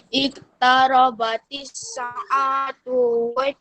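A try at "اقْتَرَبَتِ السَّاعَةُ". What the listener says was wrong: Sa yang panjang, bukan A yang panjang.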